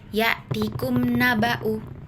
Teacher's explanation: Cara bacanya adalah bunyi mim dan nun dibaca jelas dan terpisah tanpa adanya dengung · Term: idhar syafawi